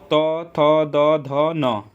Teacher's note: जिन वर्णों का उच्चारण करते समय में जीभ का अग्र भाग हमारे ऊपर के दांतों को स्पर्श करता है उन्हें दंतीय व्यंजन कहते हैं। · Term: दंती व्यंजन